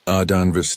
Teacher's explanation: with emphasis on the middle syllable, the sound rising and falling like traditional Cherokee speech patterns